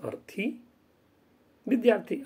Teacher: आ और अ का मिलन से ये सवर्ण हो गया दीर्घ हो गया